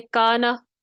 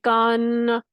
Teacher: جیسے کانا، ہمیں کان یہ تو نہیں پڑھ رہے نا، تو کانا کلیئر آواز ہے، متحرک ہے نون، اس میں کوئی غنہ نہیں ہے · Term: متحرک نون